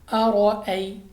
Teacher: را پر زبر، را کو بور پڑھیں گے یعنی منہ اور آواز کو کھول کر، اور یا ساکن سے پہلے زبر آ گیا تو یا لین یعنی بغیر کھینچے بغیر جھٹکا دیے پڑھیں گے، یعنی لمبا ہم نے ہرگز نہیں کرنا۔